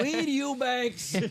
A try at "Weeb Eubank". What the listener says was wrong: Not Eubanks. Just Bank. Eubank.